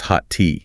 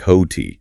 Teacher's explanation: When two identical or very similar consonant sounds meet at a word boundary, they often just coalesce into one slightly longer sound, rather than being produced as two distinct sounds. · It sounds like ho tea. You don't produce two separate T sounds. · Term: merging of consonants